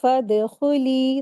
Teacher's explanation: दाल को कलकला के साथ अदा करेंगे, कलकला हो रहा है इसके ऊपर।